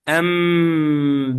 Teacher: The nasal sound should be elongated or should be done for 1 second or two harakas.